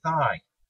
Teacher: For the one in thigh, on the other hand, your vocal cords don't vibrate, leaving you with more of a hissy sound that linguists call voiceless.